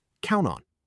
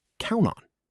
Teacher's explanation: The consonant sound at the end links right into the preposition. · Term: connected speech